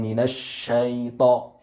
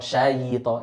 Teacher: ya-nya di sini berharokat sukun. Jangan sampai kita seakan-akan mengharokati kasroh. Minasyaito, syayito, itu salah.